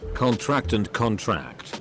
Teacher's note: stress on the first syllable is a noun stress of the last syllable is a verb